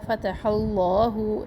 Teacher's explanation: فتح اللہ، اس میں جلالہ کو پر پڑھنا ہے